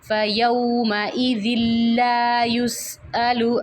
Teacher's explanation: تنوین کے بعد اگر لام آ جائے تو ہم نے اس لام کو تنوین کے ساتھ ملانا ہے لیکن ہم نے غنہ نہیں کرنا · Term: ادغام